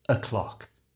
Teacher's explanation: If the time is exactly on the hour like this, we use the phrase o'clock. However, to say this naturally, change the O to a schwa sound.